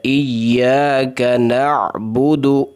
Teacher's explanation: با اور دال کے اوپر پیش ہے، مکمل ہونٹ کو گول کر کے ادا کرنا ہے